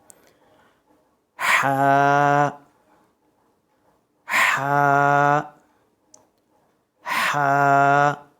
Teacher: اس کو حلق کے بیچ سے ادا کریں گے، مڈل سے. ہا ہا ہا.